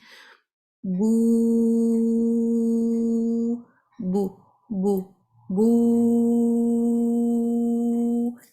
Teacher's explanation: لیکن جیسے میں نے اس کو پرولونگ کیا تو واؤ کی جو آواز ہے وہ میرے اب گلے اور منہ کے حالی حصے سے آئے گی